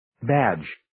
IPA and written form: bædʒ (Badge)